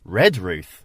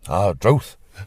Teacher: When you got that unstressed first syllable, it does, in the sounds of the older people, virtually disappear.